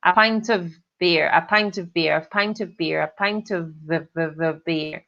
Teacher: E eles não vão falar of, eles vão falar v.